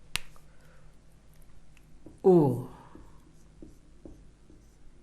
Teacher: ओ और औ का उच्चारण स्थान क्या होगा, कंठ और ओष्ठ। कंठ और ओष्ठ ये दोनों मिलकर ओ का निर्माण करते हैं। इनको भी समझना हो तो कैसे समझेंगे हम, ओ, ठीक, तो ओ कैसे बनता है, अधन उ बराबर ओ। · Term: कंठोष्ठ